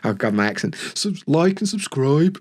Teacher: And the other thing about Birmingham, they've got this kind of what we call an upwards tilt, where it'll kind of go up a lot. It's kind of sing-songy. It kind of sounds like a song. It kind of goes up and down. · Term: Brummie accent